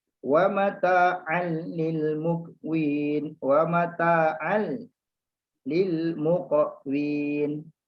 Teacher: Terus lam, seolah-olah macam tak ada tanwin, tak ada nun kat situ. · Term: idgham bila gunnah